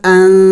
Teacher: نون ساکن ہے اخفا کرنا ہے یعنی ناک میں آواز چھپانا ہے